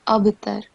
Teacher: And the ba highlighted in red, you have to perform kalkala. So a jerking sound, instead of abtar, it will be abtar.